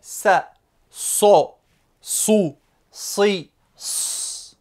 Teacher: le S emphatique, c'est-à-dire le S prononcé de façon grave. Il s'écrit avec une grosse boucle, comme vous le voyez ici, et il se prononcera ainsi.